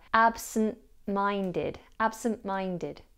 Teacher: In the compound adjective, the T is dropped, so we have absent-minded. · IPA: /ˌæb sən ˈmaɪndɪd/